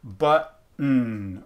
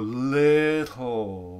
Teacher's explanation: we can get a nasal release or a lateral release, where we get something like button or little, where we release it around the side or we release it through the nose.